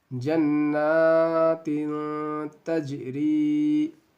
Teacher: तनवीन के बाद क्या आ रहा है, हुरूफ़े इख्फ़ा में से ता है, तो यहाँ पे गुन्ना और इख्फ़ा के साथ आपको पढ़ना है